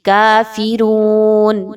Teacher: فے کی آواز نہیں آنی چاہیے بلکہ فی